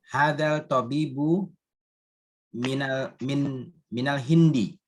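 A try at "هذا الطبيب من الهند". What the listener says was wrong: Tonya syamsiah Pak ya, dibaca hadat. Alif lamnya hilang.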